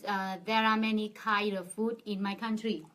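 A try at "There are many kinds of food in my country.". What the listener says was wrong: First thing I'd like to fix her on is her pronunciation. And they both have to deal with the s sound, all right? So what would be great is if she changed it a little bit. Kinds, can you say it? Kinds and foods. There are many kinds of foods in my country.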